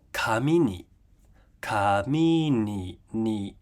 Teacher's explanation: This can be referred to as final high pitch accent. So the final beat of the word has a high pitch, and you only hear that when a particle follows the word.